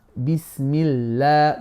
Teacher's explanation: with a kasra, Bismillah, the lam now becomes flat